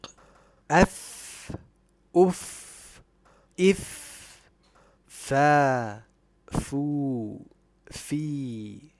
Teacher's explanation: The lip letter fa is characterized by hums and rakhawa, so the breath and sound flow easily. Also, since it is a letter of istifal and infitah, it will always be recited light or with tarqiq.